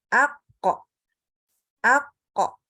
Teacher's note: waktu pas kita sedang sukun semestinya terbaca ako, ako ya, tidak dibaca ak. Nah, itu nggak boleh. · kalau huruf Qaf itu pas ketika baca itu kita nggak keluar hembusan udara. Jadi terbukti waktu pas kita sedang sukun semestinya terbaca ako, ako ya, tidak dibaca ak.